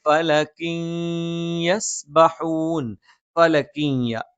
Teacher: ഫലക്കിൻ എന്നുള്ള ആ തൻവീനെ ശേഷമുള്ള യായിലേക്ക് നമ്മൾ ചേർത്ത് മണിച്ചുകൊണ്ട് ഉച്ചരിക്കും. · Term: ഇദ്ഗാമും ബിഗുന്നയാണ്